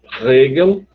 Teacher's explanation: o que eu escuto é Hegel, como se fosse uma aspiração e não como se fosse um R. Às vezes eu preciso ficar bem atento para escutar. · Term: R uvular